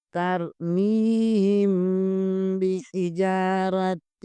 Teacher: میم ساکن کے آگے با آ رہا ہے، یہاں پر میم ساکن کے قیدوں میں سے اخفاء شفوی ہوگا، یہاں غنہ کریں گے · جیم زبر کے آگے الف مدہ ہے، اسے بھی ایک الف برابر کھینچیں گے